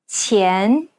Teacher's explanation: The Chinese Q sound should be pronounced with the tip of the tongue touching the bottom teeth, while the blade of the tongue lays flat behind the front teeth.